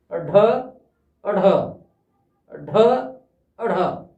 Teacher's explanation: इन दो वर्ण को जब हम उच्चारण करेंगे तो जीभ को हम फेंक कर पीछे ले जाएंगे और वो मूर्धा वाले स्थान पर टच होगी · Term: उत्सिक्त